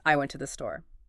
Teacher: Emphasize store, and suddenly it becomes I went to the store, suggesting you didn't go somewhere else.